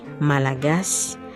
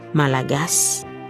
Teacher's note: The final Y is just a whisper. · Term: whisper rule